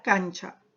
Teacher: en la palabra cancha ya no es alveolar, sino es un palatal